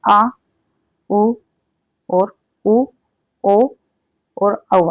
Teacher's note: जो पश्च स्वर होते हैं ये जो हमारी जीभ है उसके पीछे वाले भाग से बोले जाते हैं